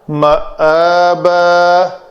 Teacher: مآبا اس کو تکلف کر کے معابا کہیں عین کی طرف نہیں لے جانا